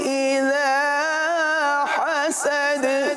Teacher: اذا حسد ہا کو واضح کریں گے اور دال پر قلقلہ کریں گے